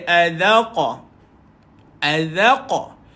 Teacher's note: Dia matikan qaf tuan-tuan dan puan-puan, ada qalqalah pada dia.